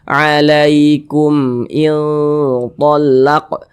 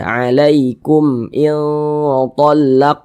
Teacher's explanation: Tapi selain huruf ba dan mim, ada mim sukun tidak berjumpa dengan huruf ba, tidak berjumpa dengan huruf mim, semua hukumnya izhar syafawi namanya. Karena dia izhar dibaca jelas, tidak berdengung, jadi pendek saja kita baca alaikum iltallaq.